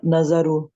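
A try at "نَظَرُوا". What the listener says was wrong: نظارو، زا موٹا پڑھتے رہیں. نظارو. आप नाजारू जी देखे, एक थोड़ी सी है, इसको ठीक करना है, ज़ा मोटी होती है।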